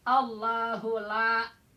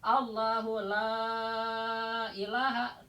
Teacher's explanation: Tapi kalau disambung Allahu la ilaha tambah panjangnya 5 harakat itu mad jaizmun fasil